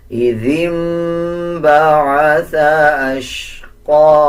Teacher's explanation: كذبت ثمود بطغواها إذ انبعث أشقاها ذال کے نیچے زیر ہے، اس کے بعد نون کے اوپر جزم ہے۔ جب نون کے اوپر جزم آ رہا ہو اس کے بعد با آ جائے تب بھی غنہ کیا جاتا ہے اور غنے کی آواز کو ناک سے نکالا جاتا ہے